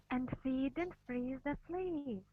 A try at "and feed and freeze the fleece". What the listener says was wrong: Yeah, you need to relax your E sound. Your long E, you're kind of doing the E. You want to make sure that it's E and let the air go through.